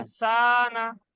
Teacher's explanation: জি জি ইন্নাল ইনসানা, ইন্নাল ইন্নাল ইনসানা লাফি নুনের উপরে জবর টান হয়ে যাচ্ছে, ইনসানা সিন টান হবে, নুন টান হবে না।